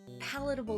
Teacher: the stress on the first syllable